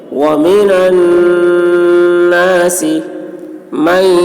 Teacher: نون مشدد ہے، غنہ ہوگا